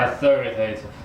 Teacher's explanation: Make the thar part a little louder and longer. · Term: stress